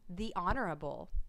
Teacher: honorable starts with an H but the sound that you hear is ah which is an o sound you usually do not stress the